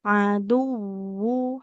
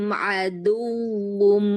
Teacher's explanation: huruf wau kan dia punya sifat raqoh ya, aduwu. Nah, jadi harus dialirkannya lebih lama lagi